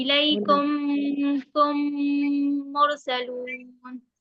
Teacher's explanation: मीम को जी मीम से मिलाएंगे भी और गुन्ना भी करेंगे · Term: इदगाम शफवी